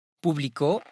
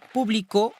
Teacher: Publico, avec accentuation sur le O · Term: syllabe tonique